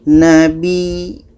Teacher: kita berhenti dengan ya yang ada tasydid kaidah tasydid adalah kita tekan